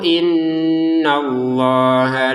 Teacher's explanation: Masih ingat nun bertasdid didengungkan ya dua harakat.